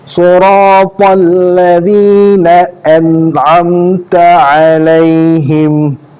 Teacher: Pastikan sebutan huruf hamzah, huruf ain dan huruf nun yang mati dan mim yang mati itu jelas tanpa ada unsur dengung. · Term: izhar halqi